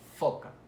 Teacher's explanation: El sonido es foca. Ven que el labio inferior y el dental superior hacen contacto y permiten el paso del aire haciendo una fricción. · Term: labiodental